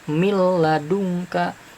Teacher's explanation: huruf idgam bilagunnah ini tanpa dengung ya tidak ada dengung · Nah, nunnya dimasukkan ke huruf lam tapi tanpa dengung. Jadi mil ladungka, mil ladung ya, jadi mil gitu.